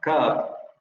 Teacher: la parte posterior de la lengua echada hacia atrás, hacia la parte del velo, pero la lengua está un poco más, digamos, relajada, entre comillas, por lo tanto queda más abajo y la es mayor. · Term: posterior semiabierto